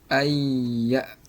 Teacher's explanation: karena tadi nun mati bertemu dengan huruf ya, sehingga ini didengungkan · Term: idgham bi gunnah